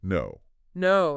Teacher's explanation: the tip of your tongue touches the ridge behind your teeth okay and the air comes out through your nose